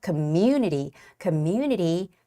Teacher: the word Community also has a very tricky stress which is Community on that u vowel